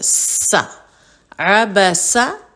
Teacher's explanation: تھوڑی سی بس سیٹی کی آواز ہے